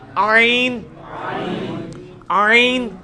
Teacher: ہا کا مخرج جو ہے نا یعنی وسط حلق، ادھر ہی سے یہ آئین بھی نکلنا ہے